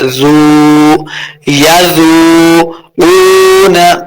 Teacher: یذوقون زال کو نرمی کے ساتھ پڑھیں گے اور واو مدہ اس کو دو حرکات لمبا کرنا ہے۔ زو یذوقون قاف کو موٹا پڑھیں گے، واو کے اوپر اپنے ہونٹ گول کرنے ہیں۔